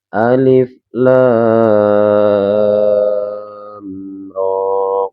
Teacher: Huruf alif kita baca cukup 1 harokat.